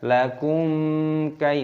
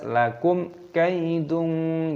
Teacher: mim sukun bertemu dengan kaf, hukumnya dibaca idhar syafawi, dibaca jelas, jangan dibaca berdengung. Tidak boleh kita bacanya lakum kai, tidak boleh.